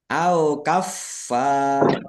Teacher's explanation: ada tasdidnya dibaca dobel, ditekan dan ditahan biar tampak dobelnya